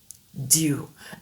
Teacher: la pointe de la langue touche l'alvéole, l'arête alvéolaire juste derrière les dents du haut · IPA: /d/